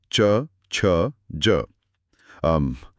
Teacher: इन ध्वनियों को बोलते समय जीभ ऊपर तालू को छूती है। इसीलिए इन्हें तालव्य कहा जाता है। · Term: तालव्य व्यंजन